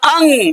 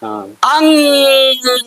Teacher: दी नाक बजा दिए हम कैसे देखिए बजाइए हमने कहा अंग अंग के उच्चारण में आप देखेंगे कि हवा नाक से निकलती है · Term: अनुस्वर